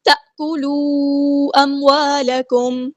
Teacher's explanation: Disconnected مد ہے، مد منفصل 4 یا 5 کاؤنٹ لمبا کرنا ہے ہم نے۔ تأکلوا اموالکم، الف مدایا ٹو کاؤنٹ لمبا کریں گے۔